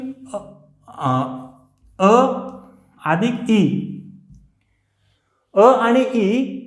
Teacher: कारण की यांचा उच्चार जे आहे तो आहे कंठ तालव्य. म्हणजे कंठाचा अ आणि तालव्याचा ई दोघांचं मिळून हे संयुक्त व्यंजन, संयुक्त स्वर तयार झालेला आहे म्हणून यांचं कंठ तालव्य हे उच्चारण स्थान आहे.